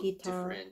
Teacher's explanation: The southern accent guitar, a little different stress on the first syllable.